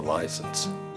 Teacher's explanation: he pronounces the diphthong with both its vowel, I, then does the Southern habit of dropping the second vowel of the diphthong